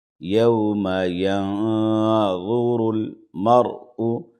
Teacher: ینظر المرء را ساکنہ سے پہلے زبر ہے زبر یا پیش را ساکنہ سے پہلے رہے گا تو را کو موٹا پڑھیں گے